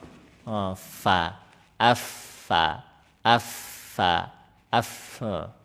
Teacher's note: Kalau fa itu fa itu tinggal ujung gigi seri atas nih tempelkan bibir bawah ini. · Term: huruf fa